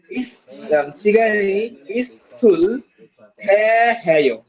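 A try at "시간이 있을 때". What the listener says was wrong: না থ্যা কেন হবে? সাংদিগুত, সাংদিগুতে ত এর সাথে এ, মানে তে। তাহলে শিগানি ইসুলতে, হ্যাঁ শিগানি ইসুলতে হ্যাঁ।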